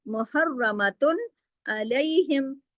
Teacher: قَالَ فَإِنَّهَا، قَالَ میں کاف موٹا کریں، فَإِنَّهَا میں نون پہ تشدید ہے، نون پہ بڑا غنہ کیجیے اکمل، پھر دیکھیے محرمتن، اس میں را کو موٹا بھی کریں گے، را کو موٹا اور ڈبل را ہے تشدید کی وجہ سے، محرمتن، تا دو پیشتن کی جو تنوین ہے اس کو پورا پورا پڑھیں گے، اظہار حلقی ہوگا، کیوں؟ آگے حرف حلقی ہے، عین ہے، عین حرف حلقی ہے تو یہاں اظہار حلقی ہوگا، کوئی غنہ وغیرہ نعت میں آواز چھپے گی نہیں۔